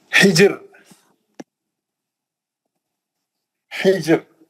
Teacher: ये रा साकिन है, ये जीम साकिन है, जीम पे खलखला भी होगा